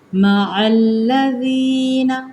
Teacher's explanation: عین کو لام کے ساتھ ملائیں گے، لال کو ہم نرم پڑھیں گے